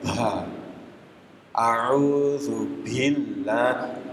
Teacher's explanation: sifatnya bukan keluar nafas. Kalau huruf ba itu sifatnya tidak keluar nafas, namanya jahar, al-jahar.